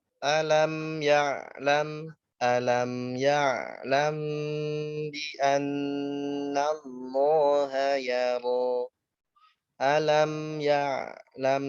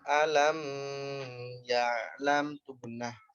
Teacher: alam ketemu mim sukun, ketemu ya, dia dibaca jelas ya mim sukunnya. Jangan gunnah, jangan mantul. Jangan alam ya'lam tuh gunnah.